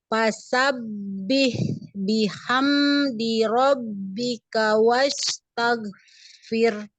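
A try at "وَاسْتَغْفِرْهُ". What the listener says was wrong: Jangan jangan di tengah lidah ya, di ujung. Wastaghfir. Goinnya jangan tag, tapi tag yang ngalir. Nah, latihan nanti goin ya, dialirkan.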